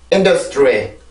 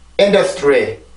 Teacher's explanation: 강세는 첫 번째 음절에 있습니다. 그러면 첫 번째 큰 리듬이 하나가 생기게 되고 작은 리듬 하나, 또 작은 리듬이 하나가 생기게 돼요. 그래서 그 모음들만 내보면 in, re 이렇게 3음절에 걸쳐서 소리를 해주면 돼요.